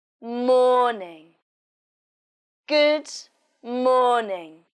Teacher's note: stress on mourning is on the first syllable morning good morning in this sentence the stress is on morning so you say it louder and longer